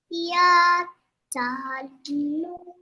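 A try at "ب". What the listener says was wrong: No, first one is Ba no ta.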